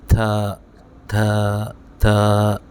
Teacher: زبان کی نوک سے تھوڑا سا اندر والا حصہ، یعنی کہ نوک کو چھوڑ کے ہلکا سا اندر والا حصہ اوپر کے دانتوں سے لگا کر یہ حرف ادا ہوتا ہے